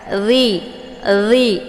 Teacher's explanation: Cara melafadzkan huruf za ini, letak posisinya di ujung lidah melekat dengan ujung gigi seri bagian atas